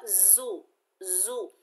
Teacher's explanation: زا کے اوپر پیش بغیر کھینچے پڑھیں گے، जा सख्ती और सीटी वाला हरूफ है, सख्ती से अदा होगा।